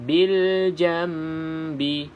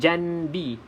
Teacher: Bacaan nun yang kita tukar kepada huruf mim. Bil jambi. Kita tak sebut janbi, nun. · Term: iklab